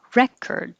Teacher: If this is a noun, the stress is on the first syllable. Record. Re is the vowel as in head, re, and then the OR changes to ER, record.